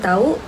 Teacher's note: Seterusnya bagi perkataan tahu iaitu tahu iaitu difton au gabungan a vokal depan rendah dan u vokal belakang sempit. Pergerakan lidah depan ke belakang dan bibir hampar menjadi bundar. Penambahan k memperkuatkan lagi intonasi dan sesuai dengan gaya penutur dialek Melayu Sarawak. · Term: diftong AU